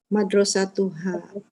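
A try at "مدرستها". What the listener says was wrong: Hanya panjang, Bu ya. Kemarin ada yang nggak dipanjangin, ha nggak ada alifnya, jadi salah. Madarosatuha panjang, tuha.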